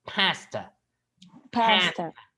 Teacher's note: Now, in English, the A, the A here is a bit more nasal, okay?